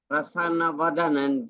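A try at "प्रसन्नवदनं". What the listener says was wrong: So the only one small observation is it is Prasanna Vadanam. There is two nakaras there. Prasanna Vadanam.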